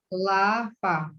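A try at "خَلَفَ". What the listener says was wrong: Oke, fa. Bukan kof ya, fa.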